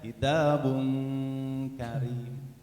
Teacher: Tidak diisti'lakan, tidak diangkat suaranya. Datar aja. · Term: huruf kaf